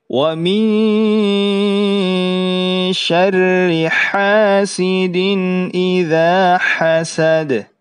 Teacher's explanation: Kemudian setelah itu ada huruf sin, biasa saja, kemudian dal terakhir ya. Berarti sifat dal pada saat sukun adalah qalqalah, dipantulkan ya